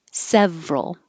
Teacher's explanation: We drop the middle syllable, so it's just two.